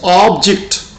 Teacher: if we place stress at the beginning, primary stress at the beginning, then the pronunciation is object and the meaning is a noun